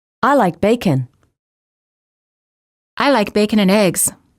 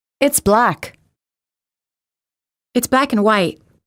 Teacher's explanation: placing the most stress on the final content word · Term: stressing final content words